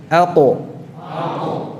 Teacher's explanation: Qaf ada di pangkal yang atas, maksudnya pangkal yang sejajar dengan apa? Langit-langit yang lunak.